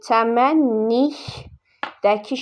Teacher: Vurğuda sonuncu hecanın üzərinə düşür.